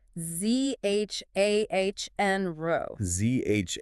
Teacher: Like in measure or vision. Exactly, it's that soft Z sound. Voiced postalveolar fricative, if you want the technical term.